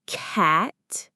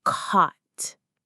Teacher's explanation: from the wide ah in that, black, and cat to the open ah in not and hot